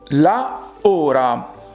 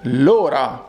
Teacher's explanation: you have two vowels clashing together, so we must proceed to do an elision between the article and the noun